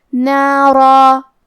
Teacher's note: ہم را کو اور مد الف کو دونوں کو بھاری آواز میں پڑھیں گے